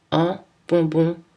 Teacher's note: à la fin des mots on ne prononce pas le n